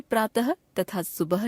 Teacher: हिंदी में प्रातः तथा सुबह शब्दों की अंतिम ध्वनि के उच्चारण में कोई अंतर नहीं रह गया है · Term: विसर्ग ध्वनि, विसर्ग